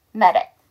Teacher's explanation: d가 몸과 몸 사이 껴서 한 번 더 약화